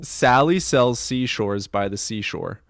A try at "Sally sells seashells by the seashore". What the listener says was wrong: it's Sally sells seashells by the seashore. Not seashor by the seashore.